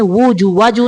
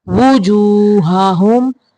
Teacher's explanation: واو کے اوپر پیش ہے تو ہونٹوں کو گول کریں گے ، واجو نہیں پڑھیں گے، زبر نہیں پڑھیں گے، پیش، وجوہہم